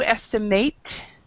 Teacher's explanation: if it's a verb, it's to estimate. So the last syllable is actually stressed.